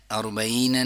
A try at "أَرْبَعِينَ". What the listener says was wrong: نہ یا کی آواز کریں گے نہ حمزہ کی آواز کریں گے، عین گلے کا درمیانی حصہ،